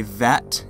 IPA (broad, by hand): ðæt